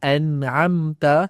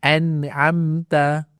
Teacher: Jadi pada bunyi an tu kita kena jelaskan bunyi nun dan jangan dengung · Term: izhar halk